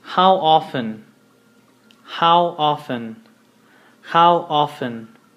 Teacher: If you notice, we do not pronounce the T. We say it like if you don't see the T there.